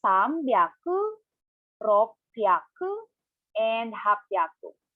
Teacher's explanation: 6 and 8 are contracted, and the he in hyaku is turned into p and b. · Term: irregulars in hundreds